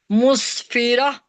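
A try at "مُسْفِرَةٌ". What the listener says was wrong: مسفیرہ، را موٹی پڑھیں.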